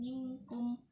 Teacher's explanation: Nun mati bertemu dengan kaf ikfa, dibacanya samar dan didengungkan.